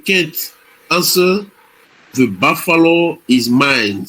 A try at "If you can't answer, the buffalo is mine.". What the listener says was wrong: Good. You see, it's much. It's clear. You get the sounds right. The s and the t.